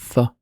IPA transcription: θ